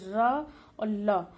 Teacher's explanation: र और ला का जो उच्चारण स्थान है वो दंत मूल है।